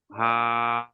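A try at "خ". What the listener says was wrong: হা নয়, এটা খ আছে না? এই উপরে একটা নোক্তা আছে, হা তো কোনো নোক্তা থাকে না।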